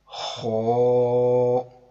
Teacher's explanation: आप देख रहे होंगे कि इसकी आवाज थोड़ी पुर की है, यानी कि मोटी आवाज में पढ़ा है। हो, हमने पढ़ा था कि हरूफ मुस्तालिया 7 हैं।